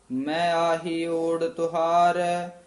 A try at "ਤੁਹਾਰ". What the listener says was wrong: ਤੁਹਾਰ ਔਂਕੜ ਨਾਲ ਉਚਾਰਨ ਕਰਨਾ, ਤੁਹਾਰ ਨਹੀਂ ਬੋਲਣਾ, ਛੇਤੀ ਬੋਲਣਾ, ਤੁਹਾਰ।